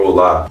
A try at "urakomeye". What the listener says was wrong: Ura. You gotta roll your R. Urakomeye.